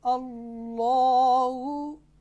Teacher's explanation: लफ्ज़ अल-जलाला में जो लाम है जिसके ऊपर खरी ज़बर है वो मोटा पढ़ा जा रहा है